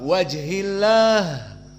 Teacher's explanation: di saat wakaf kepada liwajhillah maka ha dalam keadaan khoraja annafs karena definisi dari hams jaroyan dari annafs